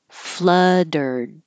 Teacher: hold the D instead of flood releasing it just hold it in that position